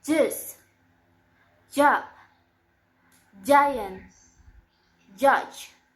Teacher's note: It's voiced, and the place of articulation is post-alveolar, and the manner of articulation is affricative.